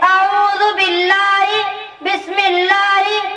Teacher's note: جب لفظ اللہ کلام سے پہلے زیر والا حرف ہو تو اس لام کو باریک پڑھیں گے